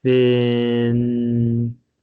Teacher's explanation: notice with fin that word begins with a continuous sound